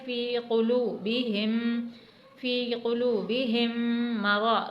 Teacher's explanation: قوف کو حلق سے ادا کرنا ہے